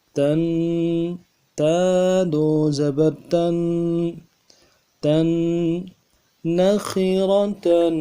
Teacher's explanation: تا دو زبر تن، تنوین ہے، ایک الف کی مقدار میں غنے کو کھینچیں گے۔